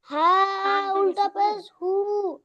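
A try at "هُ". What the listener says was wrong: আরো টান দেন আরো টান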